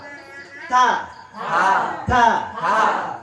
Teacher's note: setiap pengucapan huruf ta harus ditekan, kemudian harus dikeluarkan napasnya